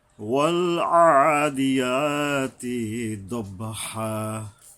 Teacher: আইন গলা চেপে একালিপ টানতে হবে